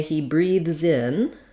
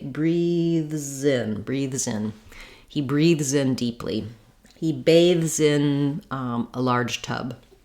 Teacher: you can hear how I'm linking together and my Z sound almost goes on the word in